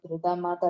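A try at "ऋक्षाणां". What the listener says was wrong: So one small correction, on the second line, not ru, r, because that u sound should not come there.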